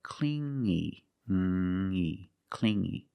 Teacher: You hear the sound only the nasal sound here, no G, not clingy, but clingy, clingy.